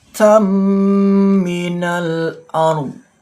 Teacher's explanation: ini bacaan idgham bi ghunnah, dengungkan membacanya 2 ketukan atau 2 harokat.